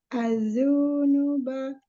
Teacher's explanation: Zalnya ada tasydid, tahan dulu. Az-zunuba. Zu-nya jangan panjang.